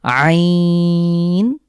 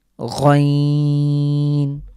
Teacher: আইন হলো কণ্ঠের মাঝখান থেকে চাপ দিয়ে, আর গইন হলো কণ্ঠের ঠিক শেষ থেকে যেভাবে খ উচ্চারিত হয়